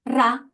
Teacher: of the tongue but we don't obstruct the air flow completely we leave a bit of space and we let our tongue the tip of the tongue vibrate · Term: rolling your tongue